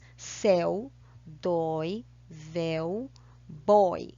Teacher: palavras de uma única sílaba e tem um ditongo aberto